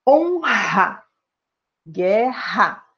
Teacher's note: O SOM É EXATAMENTE IGUAL, QUE É UMA FRICATIVA VELAR NA MINHA PRONÚNCIA DE PAULISTA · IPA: [x]